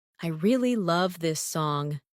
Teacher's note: Falling tone for statement.